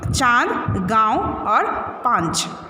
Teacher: तो क्या लिखोगे, इसका उच्चारण नाक से किया जाता है और अनुनासिक का उच्चारण नाक और गले दोनों से किया जाता है